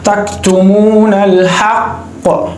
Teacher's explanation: सबसे जो पहला दर्जा है वो क्या है कि जब हालत वक्फ में होता है ना हुरूफ कलकला तो सही बिल्कुल जो है ना वो जाहिर होता है, क्योंकि आखिरी हर्फ होता है तो उसमें जो है ना कलकला खूब जाहिर होता है, आला दर्जे का कलकला होता है।